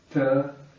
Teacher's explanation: the tip of the tongue gets pressed against the roof of the mouth, just behind the upper teeth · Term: retroflex